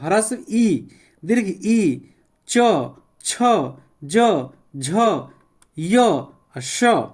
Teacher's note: तालव्य श ये तालू से उच्चारण होता है · च वर्ग वाले जितने हैं वो तालू से होते हैं